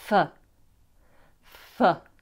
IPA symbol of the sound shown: fə